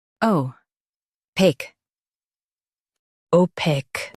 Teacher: Stress paque and keep it smooth.